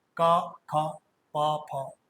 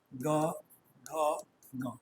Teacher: क ख में उतनी गूंज नहीं है लेकिन ग घ इनमें गूंज ज्यादा है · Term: सघोष